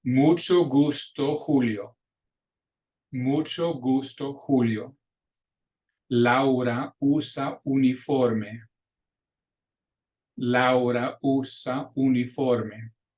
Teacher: the Spanish U is shorter than the English U